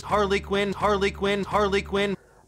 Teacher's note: full name it's Harley Quinn but the name is deliberately like the single word Harlequin which is stressed at the beginning